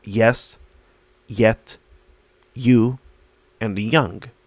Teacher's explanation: say yes slowly, the middle of your tongue touches the top of your mouth. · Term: y sound